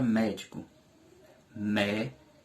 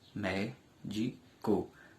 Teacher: 3 sílabas também, médico. A sílaba com maior intensidade é a sílaba mé, que é a sílaba tônica da palavra médico. Portanto, médico é uma palavra proparoxítona.